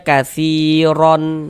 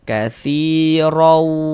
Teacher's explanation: Jadi di bagian rawunya itu suaranya itu kita tahan ya, kita panjangkan sejenak sepanjang 2 harokat, kita gunahkan atau kita dengungkan